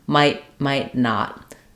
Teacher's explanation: When I'm doing might not, instead of flapping this T, I have an unreleased T. That's because when the T is followed by a consonant sound, we typically just don't let that T out.